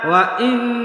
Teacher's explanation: গুন্না করবেন কিন্তু না টান দেওয়া যাবে না